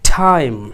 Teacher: বাতাস বের করে, স্ফীত করে, ফুলিয়ে বলা · এখন এই টাইমটাকে আমরা এই টটাকে যদি স্ফীত করে বা সাউন্ড বের করে, বাতাস বের করে বলার চেষ্টা করি, তাহলে টাইম না হয়ে হয় টাইম। টটাকে ঠয়ের মতো করে রূপান্তর করলাম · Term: অ্যাসপিরেট